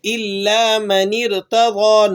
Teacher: نون کو را سے ملا کر پڑھ رہے ہیں اور حمزہ وصلی درمیان میں سے گر گیا